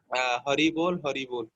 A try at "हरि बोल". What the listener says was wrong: ऐसे नहीं बोलते हरि बोल. कैसे बोलते हरि बोल? ठीक से बोलो. महाप्रभु कैसे बोले होंगे हरि बोल? इतना उदास.